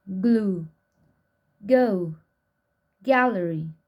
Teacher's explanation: Spelling system of G. Velar stop voiced.